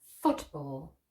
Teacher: stress on the first syllable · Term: compound nouns